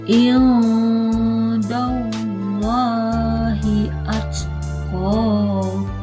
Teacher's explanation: pada kalimat Allah itu terdapat hukum bacaan mat tobi'i, dibaca panjang 2 harokat